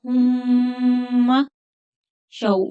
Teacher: वाव लीन है तो थोड़ा नरमी के साथ जल्दी पढ़ेंगे।